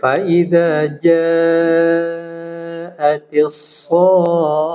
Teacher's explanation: Jadi panjangkan dulu 6 harokat baru di tasdid.